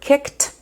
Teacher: The ED is pronounced t even though in some other words it's pronounced ed or d.